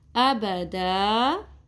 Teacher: دال 2 زبر دن. ابدن کو وقف کی صورت میں ابدا پڑھیں گے. دال زبر الف دا، مد اصلی کر لیں گے یہاں پہ.